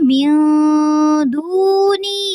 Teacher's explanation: نون ساکن کی آواز کو اخفا میں تبدیل کریں گے، ٹھیک ہے، یعنی ناک میں لے جائیں گے. من دونی یا ساکن جو ہے یہاں پہ مد ہو رہی ہے.